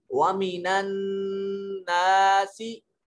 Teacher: یہ نون مشدد ہو تو غنہ ہوتا ہے، آواز کو ناک میں لے کر تھوڑی سی گنگنائیں گے